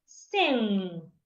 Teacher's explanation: you need to make sure that when you're ticking the sound the air from your lungs is coming out from your nose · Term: nasal sound